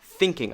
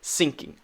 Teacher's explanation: every time there's a th sound, you say s